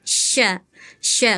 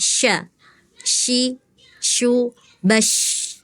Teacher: Hati-hati terdengarnya tadi seperti sain itu makhrajnya dari tengah lidah nih dari sini sya sya kemudian sifatnya tapasyi banyak angin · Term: huruf syin